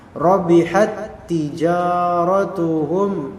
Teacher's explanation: Rabihat, lihat di sini tak untuk rabihat dia tidak dimasalahkan, melainkan langsung ke tak berikutnya ditasdidkan. Karena tak yang sebelumnya rabihat ini taknya mati, maka dileburkanlah langsung bacaannya ke tijarah.